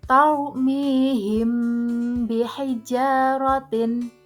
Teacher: Cara membaca ikhfa syafawi yaitu dengan suara yang samar antara mim dan ba pada bibir. Kemudian ditahan kira-kira 2 harokat atau ketukan, seraya mengeluarkan suara ikhfa dari pangkal hidung.